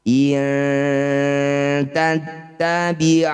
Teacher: Nun sukun bertemu tak, dal atau po disebut bacaan namanya ikhfa aqrab. Bunyi nun dengungkan 2 harokat, saat dengung lisan kita sudah bersiap di huruf tak.